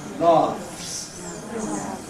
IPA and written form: lɑːfs (laughs)